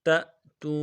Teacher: تا حمزہ زبر تا، جھٹکا دیں گے حمزہ ساکن کے اوپر، تا حمزہ زبر تا۔ تا واو پیش تو، واو مدہ کھینچیں گے، تا واو پیش تو، تأتو۔